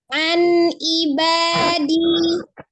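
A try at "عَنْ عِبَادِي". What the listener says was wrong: Jangan dipisah, jangan an ibadi.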